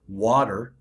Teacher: water for example two syllables is actually a stressed unstressed sound · Every word in the English language has syllables in it, and those syllables are either stressed or unstressed. So water, for example, 2 syllables, is actually a stressed, unstressed sound